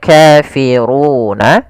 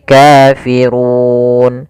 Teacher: Awalnya adalah kafiruna, tetapi karena kita berhenti, kita membuat nun sukun, menjadi kafirun. Kemudian untuk panjang 'ru' itu sendiri, karena ada huruf mad sebelum huruf yang dijadikan sukun, kita bisa memanjangkannya menjadi dua harakat, empat harakat, atau enam harakat. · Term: sukun kering